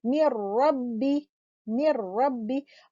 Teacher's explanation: तो यहाँ पर आप देख रहे हो नून साकिना के बाद रॉ है, क्योंकि यहाँ पर नून साकिना रॉ में कंप्लीटली मर्ज हो गया, यानी नून का मखरज भी मर्ज हो गया और नून का गुन्ना भी मर्ज हो गया। तो it is as if नून doesn't exist, बिल्कुल ये ऐसे हो गया है मिर रब्बी, मिर रब्बी। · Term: इदगाम बगैर गुन्ना